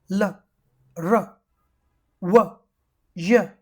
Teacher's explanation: When we say them, the different parts of mouth we bring closer but we do not let each part touch the other